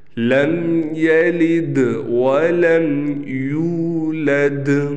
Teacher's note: یہ یو کو ہم نے تھوڑا کھینچنا ہے، بعض لوگ اس کو کھینچتے نہیں ہیں تو یولد پڑھ لیتے ہیں، جس سے معنی تبدیل ہو جاتا ہے اور نماز فاسد ہو جاتی ہے۔ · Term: حروف مدہ